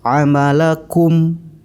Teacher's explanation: mim mati dibaca dengan jelas dan bibir harus rapat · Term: idhar syafawi